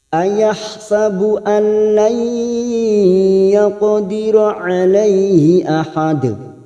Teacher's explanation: nun sukun bertemu lam namanya bacaan idgham bila guna, hanya masuk tanpa mendengung, tanpa ditahan lama-lama. Nun sukun atau tanwin yang bertemu dengan dua huruf ini yaitu huruf lam dan ro namanya idgham bila guna, hanya masuk tanpa ditahan, tanpa mendengung.